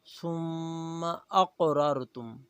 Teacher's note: ثم میم مشدد ہے غنہ کریں گے۔